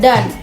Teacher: Contohnya pada kata dan bunyi A memiliki puncak silabel karena paling nyaring dibandingkan bunyi D dan N